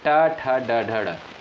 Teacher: मूर्धा की बात करें तो ट वर्ग के अंतर्गत जो भी वर्ण आते हैं जैसे ट, ठ, ड, ड, ड इनका उच्चारण मूर्धा से होता है। इन्हें मूर्धन्य वर्ण भी कहा जाता है। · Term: मूर्धन्य वर्ड